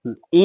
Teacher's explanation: तालव्य और नासिक जो होता है वो ञ का उच्चारण स्थान होता है।